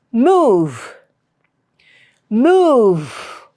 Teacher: Move and stretch it. That v sound is stretched. It is prolonged.